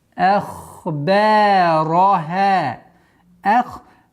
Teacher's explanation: Надо с мягкой хамзой уходить на твердый ха